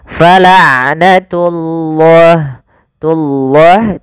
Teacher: pada lafal ain sifat bainiyah tidak terlalu ditahan suara ainnya dan tidak terlalu dilepaskan